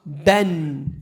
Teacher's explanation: the tanween, it just adds a noon at the end.